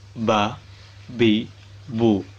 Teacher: Makhraj huruf ba adalah bibir atas dan bibir bawah dirapatkan bersama-sama.